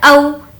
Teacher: او، حمزہ واو زبر او، یہاں پر واو لین کا قاعدہ ہے، او اس لیے کھینچ کر نہیں پڑھیں گے